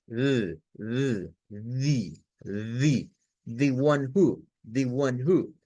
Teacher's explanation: es la TH, es un sonido interdental y tiene que vibrar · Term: sonido fricativo interdental sonoro